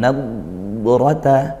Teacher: dia punya sifat yang khusus, istitalah namanya, memanjangkan pada makhrajnya huruf dhad. Ketika sukun nadhrata, nah, silakan didengarkan itu ya, itu ada aliran suara gitu.